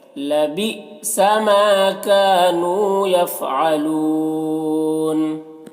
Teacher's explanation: لبی یہاں پر حمزہ ساکنہ جھٹکا لگے گا۔ ماں میں الف مدہ ہے اور کا میں الف مدہ ہے، دونوں کو ایک الف کے برابر کھینچیں گے۔ نون میں واو مدہ ہے، اسے بھی ایک الف کے برابر کھینچیں گے۔